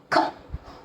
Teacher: Back part of the tongue, you have to touch it to alveolar ridge, to soft palate above, and then you will get the sound K.